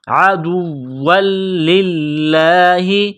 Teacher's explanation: واو کو لام کے ساتھ ملائیں گے، لام کو دبائیں گے. عدوا للہ، لفظ اللہ کے نام سے پہلے زیر ہے تو لفظ اللہ کے نام کو باریک کرنا ہے